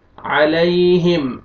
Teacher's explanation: میم پہ آپ نے اخفا نہیں کرنا ہے، میم کو آپ نے جلدی پڑھنا ہے